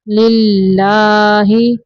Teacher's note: اللہ کا لام باریک پڑھیں گے کیونکہ اللہ کے لام کے پچھلے حرف کے نیچے زیر ہے